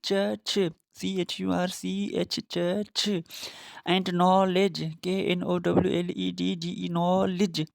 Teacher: The air is completely closed front the tongue towards the hard palate. The vocal cords are also vibrate. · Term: affricate sound